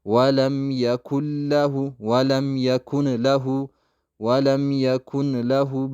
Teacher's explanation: ውስጥ ቀጥታ እንከታታለን። ወለም የኩለ የኩለ የኩለ። ኢድጋም ቢገይሪ ጉና ይባላል። ላሟ ላይ ጉና ሳናረግ ቀጥታ አጥብቀናት ብቻ የምናልፋት ነው።